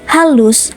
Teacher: dengan ciri mati oral laringal dan frikatif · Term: H terbuka